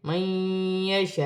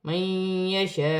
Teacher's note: بڑی مد بھی ہے، مد متصل، دونوں کو ملا کر 6 الف کی مقدار کھینچ کر پڑھا جائے گا